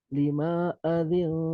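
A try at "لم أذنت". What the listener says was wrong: Limanya pendek.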